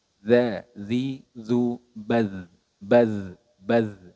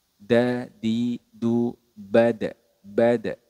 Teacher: huruf dalal ini memiliki sifat rakhawah atau suaranya mengalir sedangkan huruf Dal memiliki sifat syiddah atau suaranya tertahan